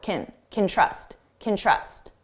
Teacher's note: When can is the auxiliary verb, so it's not the main verb, we reduce this to kin, and it's very unstressed sound.